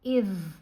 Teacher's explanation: यहाँ पर ज़ुबान जो है ये दांतों के दरमियान, यानी आपके जो ऊपर वाले और नीचे वाले दांत हैं वो बंद नहीं होंगे, ज़ुबान ऊपर वाले दांतों को हल्का सा टच करेगी। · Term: ज़ाल की आवाज़